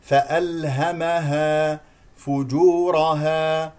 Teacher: فالهمها فجورها وتقواها فالهمها كلها مفتوحه والحروف كلها مستفه فالهمها فجورها لدينا فقط الراء هنا مفخمه لانها مفتوحه